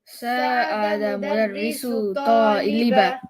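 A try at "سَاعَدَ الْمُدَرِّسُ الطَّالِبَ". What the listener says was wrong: I need you to say the L here. Sa'ada al-mudarrisu at-taliba.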